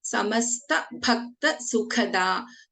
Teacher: Bha is a mahaprana and kha is a mahaprana.